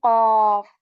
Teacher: of the tong tongue right the very inside of our tongue back part of the tongue it touches the soft palette with strength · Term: heavy letter